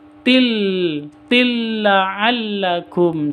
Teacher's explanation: Tanwin bertemu dengan lam, idgham bila gunnah. Dibaca masuk langsung ke lamnya tanpa dengung.